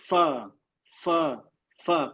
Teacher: आगे के जो दांत जो होते हैं उसका किनारा नीचे के होंठों के अंदरूनी किनारे पे लगता है